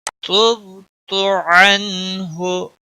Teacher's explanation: وَأَسْتَغْفِرُكَ لِمَا لَا أَعْلَمُ بِهِ تُبْتُ عَنْهُ. تب با پر قلقلہ ہوگا، باقی کسی بھی حرکت والے حرف کو کھینچنا نہیں.